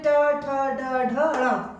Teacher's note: ट में ट ठ ड ढ ण। तो ये ट वर्ग के जितने भी वर्ण हैं वो सब आपके मूर्धा के द्वारा बोले जाते हैं